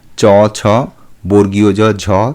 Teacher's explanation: সম্মুখ জিহবার পাতলা অংশ যখন শক্ত তালু ও দন্তমূল দুই স্পর্শ করে অথবা দুই এর সংযোগস্থল স্পর্শ করে তখন যে ধ্বনি উচ্চারিত হয় তাকে তালুদন্তমূলীয় ধ্বনি বলে